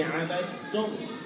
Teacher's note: اب دیکھیے جیسے عبدتم، اب یہ دال ہے نا، دال، اس کو تا کے اندر مدغم کیا، ملا دیا ہے تو دال مدغم ہے، تا مدغم فی ہے